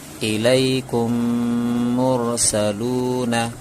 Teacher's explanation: پہلے اسے پڑھ کے سنا دیتے ہیں، جیسے الیکم مرسلون۔ یہاں میں میم ساکن کے بعد میم آیا تو میم کو میم سے ملا کر پڑھا اور گنہ بھی کیا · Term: ادغام شفوی